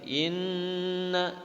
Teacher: Inna nun bertasydid, maka dinamakan gunnah atau izharul gunnah.